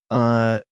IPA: ə